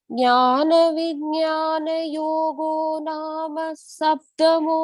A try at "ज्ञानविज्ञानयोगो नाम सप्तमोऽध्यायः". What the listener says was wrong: Very nice. Sarvam Krishnarpanam. Beautifully repeated.